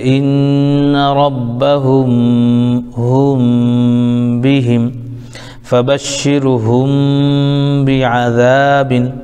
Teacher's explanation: میم کی آواز کو تھوڑی سی ناک میں چھپا کر کے پڑھیں گے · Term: اخفاء شفوی